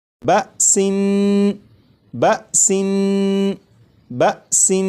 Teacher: یہاں پر دیکھیں یہ لفظ لکھا ہے بسن، اس لفظ کو اب میں پڑھوں گا 2 مرتبہ، اس کے بعد 4 مرتبہ آپ پڑھیے گا، اور پڑھتے ہوئے اس بات کا خیال رکھیے گا کہ سین کو جب میں پڑھوں گا تو سین کی جو تنوین ہے، جب تنوین کی ادائیگی کروں گا تو نون کو پڑھتے ہوئے زبان تالو سے لگا کر پڑھوں گا، اس کے بعد پھر آپ جب پڑھیں تو آپ بھی اسی طرح پڑھیے گا، جیسے بسن بسن بسن۔